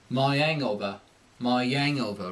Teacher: the vowel I has an implied Y sound at the end of it